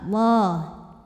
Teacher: lam jalalah dibunyikan secara tafkhim karena huruf sebelumnya berbaris fathah, maka dibacanya tebal.